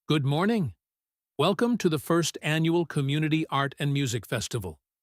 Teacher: She is using her public speaking rhythm. This is louder, slower, and more articulated than her casual speech.